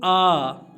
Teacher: जब आ बोलते हैं तो पूरा मुंह खुल जाता है। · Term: विव्रत